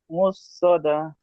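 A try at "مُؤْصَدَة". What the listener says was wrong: মুসদা হবে না মিম হামজা পেশ মু ঝাটকা হবে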